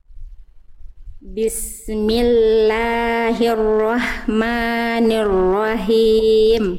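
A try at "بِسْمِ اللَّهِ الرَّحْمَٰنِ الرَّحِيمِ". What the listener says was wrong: Sip, bagus, panjang pendeknya bagus. Hak kecilnya kurang berbisik, Bunda. Hak kecil, berarti nafasnya berbisik. Jadi kurang lembut. Tadi agak nanggung hak kecil Bunda. Jadi hampir kayak hak besar. Tapi saya tandai warna hijau saja karena masih ada hak kecilnya, cuman dia kurang kuat.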